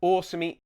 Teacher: That's a long O at the beginning. It's called Bimaraic for you linguists out there.